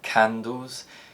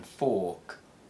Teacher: Furthermore, unvoiced plosives are often aspirated at the beginning of syllables. So the k sound in candles is produced with more air than the k sound in fork